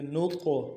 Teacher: قا حرف قلقلہ میں سے ہوگا، جب ساکن ہوگا قلقلہ کریں گے